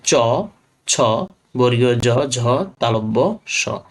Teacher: জীবের ডগা খানিকটা প্রসারিত হয়ে শক্ত তালুর কাছে বায়ুপথে বাধা সৃষ্টি করে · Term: তালব্য ব্যঞ্জন